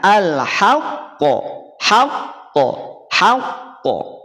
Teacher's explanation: ketika dia bertasdid jangan langsung dipantulkan tapi apa tekan baru pantulkan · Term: Qalqalah Akbar